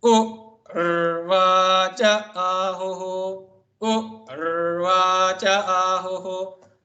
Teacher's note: U in the Swarita. U is the higher pitch.